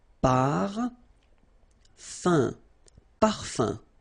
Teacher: So it's nasal and it's un. So it really goes in your nose. You don't pronounce the M at all.